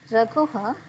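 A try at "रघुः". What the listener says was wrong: Raghuhu. Again, ukara should end there after Visarga. Raghuhu. Not Raghuha. Raghuhu. Raghuhu.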